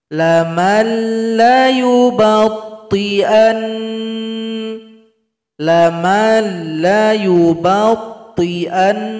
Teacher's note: Berikutnya ayat 72, cara berhenti pada huruf nun yang bertasdid. Sukunkan huruf nun berikan bunyi dengungan 2 ketukan.